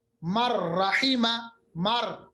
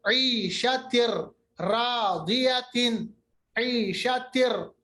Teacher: اسی طرح را مر رحیمہ، مر جیسا کہ نون رہا ہی نہیں، ادغام ہوا بلا غنہ